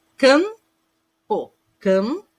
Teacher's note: Vocês podem perceber que até treme aqui, porque o som tem um som nasal.